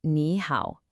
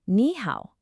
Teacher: the first word naturally changes into a rising, unsure tone